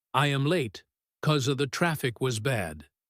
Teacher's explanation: In casual conversation, nobody says because with two perfectly clear syllables. It almost always gets reduced to cause.